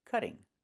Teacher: Move the stress to the first syllable, cut. Not cutting, but cutting.